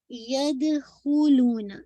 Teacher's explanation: ید دال پہ قلقلہ کیجیے گا